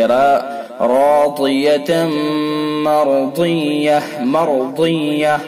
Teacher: راضیتم مرضیہ، تا کے اوپر دو زبر ہے تنوین کے بعد، یا واو میم نون میں سے میم ہے لہذا ادغام ناقص ہوگا، ادغام ناقص بالغنہ، غنہ کے ساتھ پڑھیں گے